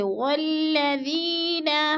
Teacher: آیت نمبر 3 میں والذی یا ساکن سے پہلے ذال کے نیچے زیر ہے تو یا مدہ ہو رہا ہے۔ یا مدہ کو ہم نے 1 الف 2 حرکات کے برابر کھینچ کر پڑھنا ہے، یعنی لمبا کرنا ہے